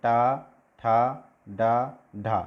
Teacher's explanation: जीभ पलट करके दांत से जो मसूड़े हैं उनसे थोड़ा सा पीछे बार बार लग रही है। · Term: मूर्धा